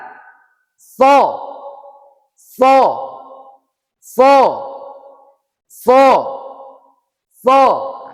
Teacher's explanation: As sofir ini adalah sifatnya seperti kita sedang bersiul.